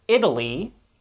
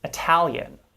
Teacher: the second syllable in italian is stressed whereas the second syllable with the t in italy is not stressed